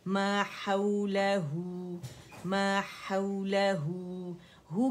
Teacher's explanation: वाव सगीरा हा की आवाज़ को दम्मा के साथ स्ट्रेच करें तो हमारे पास मद सिले सुगरा बन रही है